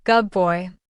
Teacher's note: For instance, good boy sounds more like good boy. The D blends into a B.